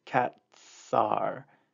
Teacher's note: it is the voiceless S because the consonant that comes before it is a T, which is T, and it's voiceless.